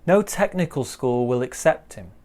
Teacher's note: will doesn't really have any stress on it we don't stress that one no technical school will accept him